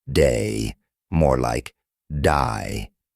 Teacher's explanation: the Australian accent may say words like day more like die